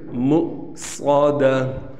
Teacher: ہم اس واو کو نہیں پڑھیں گے بلکہ اس کے اوپر حمزہ کو پڑھیں گے